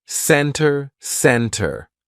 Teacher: usually if the t comes after an N we drop that t and we do not pronounce it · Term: silent T